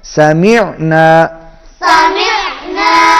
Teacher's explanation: عین حلق میں صدا ہوگا